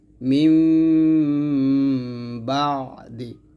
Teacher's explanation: আছে দেখুন নুন সাকিনের পরে ইকলাবের হরফ বা 80 আছে অতএব নুন সাকিন মিম দ্বারা বদল করিয়া গুন্নার সহিত পড়তে হবে ইহাকে ইকলাব গুন্না বলা হবে